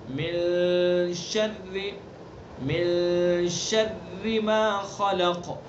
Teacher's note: شر کی راہ کو باریک، شر نہیں پڑھیں گے اس کو، اور اس کے اندر تکرار بھی نہیں کریں گے، شر ایسے بھی نہیں کریں گے.